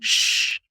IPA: ʃ